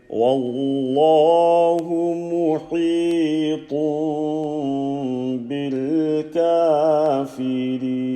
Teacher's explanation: Ha sound from the middle of the throat, powerful mouth.